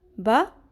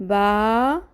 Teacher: با زبر با، ایک حرکت، یعنی کہ آدھا الف۔ با زبر الف، با، پورا الف۔